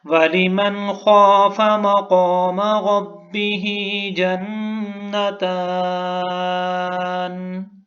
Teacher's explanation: من کے اوپر غنہ کیوں نہیں کیا ہم نے کہ نون ساکن ہے اور نون ساکن کے بعد خا آ رہا ہے حروف حلقی میں سے۔